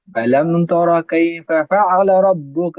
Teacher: را پر زبر ہے، اس وجہ سے را کو موٹا پڑھیں گے